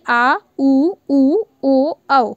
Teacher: आप बोल के देखेंगे तो आप देखेंगे तो जो आपकी जो जीभ है वो पूरी मुँह में कहीं भी टच नहीं हो रही है, मतलब किसी का सपोर्ट नहीं ले रही है, इसलिए ये पीछे वाले भाग से बोली जा रही है, इसलिए इनको पश्च स्वर कहा गया है